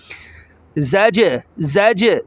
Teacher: زا کو جیم کے ساتھ جب ملائیں گے تو جیم کو ظاہر کریں گے جھٹکے کے ساتھ۔ میں آپ کو بتاتا ہوں یہ جو رنگ آتا ہے یہ قلقلہ کہلاتا ہے، اسے رنگ کے لفظ قلقلہ کے ہیں، ٹھیک ہے۔